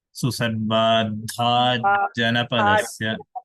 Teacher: Ja is not Mahaprana, only Dha.